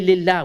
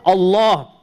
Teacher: Or Allah, we say the heavy L. If there's a kasra, then we say Lillah, we make it light. Otherwise, when there's a fatha or a dhamma before it, we pronounce the lam as heavy.